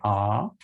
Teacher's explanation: notice not only the jaw but the corners are lacks and the tongue just follows the jaw down so it's in the lowest low position